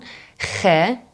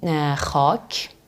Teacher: khe, guttural, which sounds like as if you're choking. It goes deep like this.